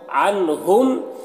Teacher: نون میں اظہار ہوگا، نون کو ظاہر کر کے جلد پڑھیں گے